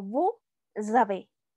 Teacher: lo que va a pasar es que esa S final se va a pasar a la siguiente palabra y entonces va a sonar como vous avez, que es usted tiene. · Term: liaison